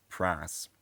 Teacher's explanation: the vowel in a word like price so the i i vowel is also smoothed and dr john's accent is something like um pras